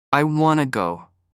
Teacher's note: native speakers will often say, I wanna go, because they link the words want and to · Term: linking sounds